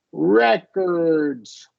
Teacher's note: So it is re with the shorty here. We're going to stress the first syllable, and we're going to do a schwa R here with the noun form.